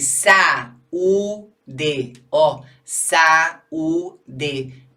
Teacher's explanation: Mexi a boca 3 vezes, então o A e o U ficam em sílabas diferentes, não mais a mesma sílaba, porque formaram hiato.